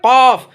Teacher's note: न जड़ जुबान, बड़ा काफ का मखरज देखिए, जड़ जुबान तालू से मिलकर कौफ अदा होता है। इसको पूर करके पढ़ा जाता है, कौफ।